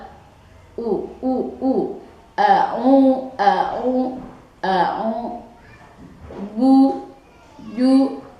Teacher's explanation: Jadi u harus dibaca u dengan jelas, tidak boleh bunyi seolah-olah ngambang u-nya atau sehingga samar antara o dengan u. Jadi harus jelas u, bu, ju, dan seterusnya.